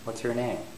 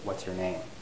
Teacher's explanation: It would go up, beginning on your, and then rise, and then finally fall at the end. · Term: information question